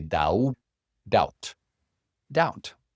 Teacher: So remember the B, you don't pronounce the B. You don't say doubt.